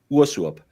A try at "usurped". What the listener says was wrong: Usurped. Usurped. He said usurped. He made it a double O sound somehow. Usurped.